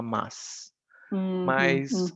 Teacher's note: na cidade de São Paulo por exemplo no Rio Grande do Sul eles vão falar sem o i Extra